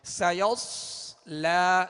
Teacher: سیصلا میں سین کو باریک پڑھیں گے مگر سیٹی کی آواز میں. آگے صاد حروف مستعلیہ میں سے پر کریں گے مگر سیٹی کی آواز میں